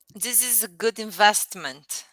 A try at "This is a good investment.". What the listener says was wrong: Perfect. You said that perfectly fine.